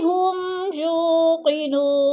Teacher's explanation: ہم کو لمبا نہیں کرنا اور غنہ بھی نہیں کرنا کیونکہ ادھر اظہار ہو رہا ہے. صاف کر کے واضح واضح پڑھنا ہے.